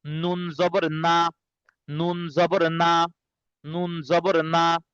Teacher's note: নুন, জিহ্বার আগা উপরের তালুর সঙ্গে লাগবে